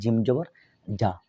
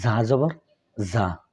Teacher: জিম জবর যা, জিব্বার মাঝখান থেকে আসছে। আর যা জবর যা, জিব্বার আগা থেকে একটু শক্ত হার্ডভাবে আসে